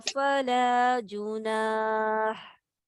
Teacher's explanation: अगर जुनाह पे रुकेंगे तो हा बारीक हम्स के साथ निकलेगी